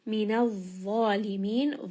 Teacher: za is going to be heavy and it is also a two count madd. And then end on a four count madd.